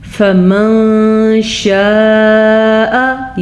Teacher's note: नून साकिन की आवाज़ को किसी हद तक हम छुपा के पढ़ेंगे, इसी को इख्फा कहते हैं